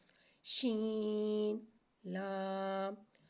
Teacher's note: شین میں تفشی والی سیٹی کو ظاہر کریں گے